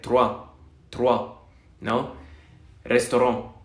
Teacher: hay acentos de gente que también es nativa del francés que no pronuncia esta R así, sino la pronuncia como en español. Por ejemplo, en acentos viejos o en acentos de generaciones más grandes de Quebec.